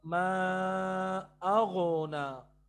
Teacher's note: یہ قلقلہ ہو گیا غین کے اوپر، یہ رانگ ہے، یہ غلطی ہے بہت بڑی. ٹھیک ہے نا، ہم نے اس کو اغنا نہیں پڑھنا، بلکہ ہم نے غین کو پکڑ کے رکھنا ہے، اغ اور پھر نا.